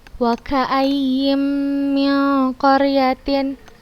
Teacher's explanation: Ustazah bacanya langsung ustazah masukkan ke huruf mim dan dengan gunnah. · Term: Idgham bi gunnah